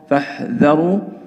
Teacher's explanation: لابد من بيان همس الحاء